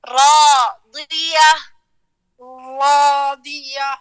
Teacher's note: را کے بعد حرف الالف ہے, الف میں لمبائی میں منہ کھولے